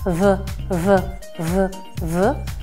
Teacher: [Musica] vocali ed è centrale mentre la v v v v è quella che per essere messa ha bisogno anche dell'ausilio delle corde vocali proviamo a fare Questo esercizio ripetiamo sempre delle sillabe fa fa